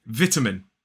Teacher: 3 syllables, the stress is on the first, vitamin. Whereas in American English, it is vitamin.